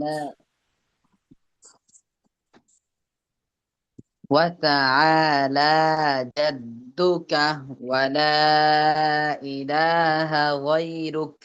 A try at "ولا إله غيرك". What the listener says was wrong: হ্যাঁ, লার মধ্যে টানতে হবে।